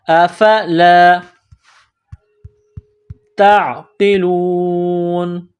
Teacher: تا کو عین کے ساتھ ملانا ہے، پلس کرنا ہے. عین گلے کے درمیان سے عین کو نکالیں گے زور لگا کر.